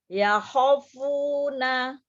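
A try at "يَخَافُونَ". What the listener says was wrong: Pokoknya panjang nih dibuka. Ya khafuna. Oh, belum. Pokoknya 2 harokat, ada alif sebelumnya fathah di huruf kha, maka pokoknya dibaca 2 harokat.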